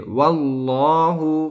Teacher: جب بھی اللہ کے لام سے پہلے زبر یا پیش آئے تو اللہ کے لام کو پر یعنی موٹی آواز سے پڑھیں گے